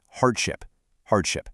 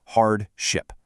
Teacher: The American pronunciation stresses the first syllable